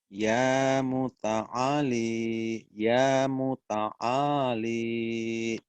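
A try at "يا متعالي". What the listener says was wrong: Bagus. Agak panjang sedikit.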